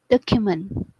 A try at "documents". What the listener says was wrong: Okay, so that's we're gonna have the ending sound on there with the TS, and we're gonna hit the end, the middle part of the ending a little stronger. So documents.